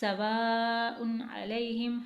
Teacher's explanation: عین کو حلق سے ادا کرنا ہے، ہا کو سینے سے ادا کرنا ہے۔